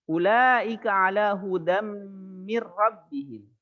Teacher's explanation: Dikala bertemu dengan ya, mim, nun, waw, maka nun sukun atau tanwinnya dimasukkan ke huruf di depannya, ya, dengan ditahan 2 harokat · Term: idgham bi gunnah